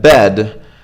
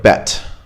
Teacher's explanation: bed sounds like bet right when you unvoiced it and you say the T instead of a D